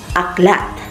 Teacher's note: ang posisyon ng dila ay mababa at ang bahagi ng dila ay nasa sentral